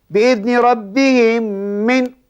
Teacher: >> Cara bacaannya dimasukkan diidgam dimasukkan di dalam diidgamkan mim pertama ke dalam mim yang kedua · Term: idgham mislain, idgham mutamassilain